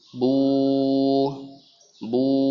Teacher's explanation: Kemudian huruf gambar nomor 2 tentang waw sukun. Maka dibaca bu panjang dengan memonyongkan bibirnya.